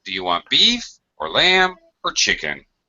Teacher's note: Doesn't matter how many it is. The last one goes down. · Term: intonation pattern